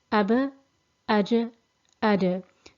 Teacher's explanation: you can hear that I'm doing the bouncing sound which we previously had on Jeeb and Ba, which in Arabic we call Qalqala.